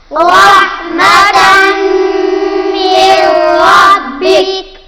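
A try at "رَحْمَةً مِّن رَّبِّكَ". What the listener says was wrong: नून साकिन है, उसके बाद रा आ रहा है, यहां पर हम नून को नहीं पढ़ेंगे, मीम को रा के साथ मिलाएंगे, यहां पर इदगाम बिला गुन्ना होगा। रहमतम मिर रब्बिक,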